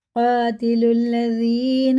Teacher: لکھنے میں آئے، پڑھے بالکل نہیں جائیں گے، سیدھا لام لام میں لگے گا